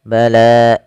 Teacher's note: Bala mat tabi'i fathah bertemu alif, panjangnya 2 harokat